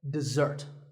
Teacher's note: this is dessert notice that the first syllable is dip and the second starts with a Z sound we stress the second syllable dessert this word refers to something sweet that's eaten at the